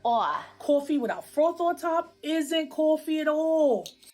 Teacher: one feature common in new york city is what we call a raised vowel in words like thought and cloth